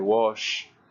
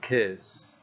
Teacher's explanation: When you make those sounds, when you pronounce words like wash, like kiss, right at the end there is no vibration in your vocal cords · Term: voiceless sound